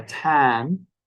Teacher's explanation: say shorter than we would say in the word tan tan in English or tan has a long vowel because it ends in a voiced consonant an N but in Cornish has a short vowel so it sounds a